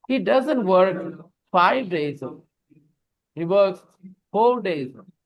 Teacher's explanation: We need to stress 5 because it is wrong information.